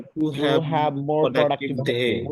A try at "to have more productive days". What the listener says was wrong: এই যে টু বলবেন না, টু কখনোই বলবেন না, এটা এই শোয়া সাউন্ড আছে এখানে, ঠিক আছে? to have, in the morning, to have more productive days. To have,